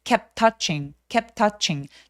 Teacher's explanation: 똑같은 티기 때문에 한 번만 발음합니다